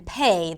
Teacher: There are the aspirated P as in pay that exists in English as well